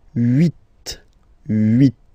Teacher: this H letter here, okay, doesn't exist phonetically, so we don't really pronounce it